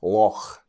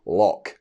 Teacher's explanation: this sound, that guttural back of the throat noise, doesn't exist in everyday speech · If you're a Scot, Welsh, Irish, and a few others, chances are you'll be able to say this correctly, Loch, as in Loch Lomond. If, however, you're English or American, of course I am generalizing here, do not come for me, you will typically say Loch, with a K.